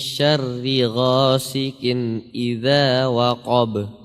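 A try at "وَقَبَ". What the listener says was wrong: Ya, huruf qaf tebal atau tipis? Tebal ya. Jadi harus kita tebalkan. Qa, qi. Qi, qa. Ya, waqab harus tebal. Ya, jadi tebal dan tipis ini kendalinya ada di pangkal lidah.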